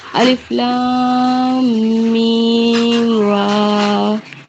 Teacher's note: मीम में थोड़ा गुन्ना करेंगे